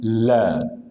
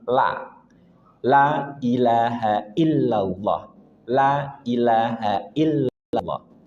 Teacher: Dan ingat huruf lam termasuk huruf tark tipis jangan sampai ditebalkan